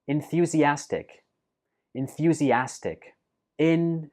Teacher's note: So it has 5 syllables. And note that the stress for this word is on the 4th syllable